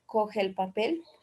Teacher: En nuestro habla frecuente, las dos vocales iguales coinciden. En este caso se fundan en una y se produce un ligero alargamiento de la vocal resultante. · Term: vocales largas